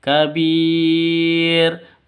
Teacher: Kabir, mad arid li sukun, panjang boleh 2, boleh 4, boleh 6 ketukan.